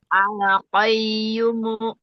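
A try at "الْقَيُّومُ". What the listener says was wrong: Ah, lamnya al-qayyum. Ayunya 2 harokat sekali lagi. Kurang nabarnya.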